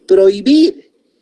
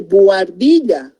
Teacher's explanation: esa H intermedia es muda, por consiguiente hay diptongo